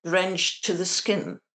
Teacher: we're actually taking out the T at the end, the ed ending, the t, yeah, because we've got at the beginning of the next word.